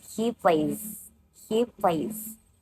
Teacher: S ending sounds like Z. After voice sounds he plays.